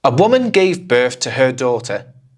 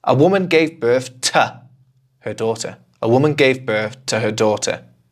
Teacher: 'To' doesn't hold so much information, so we kind of say it and we move on as fast as we can.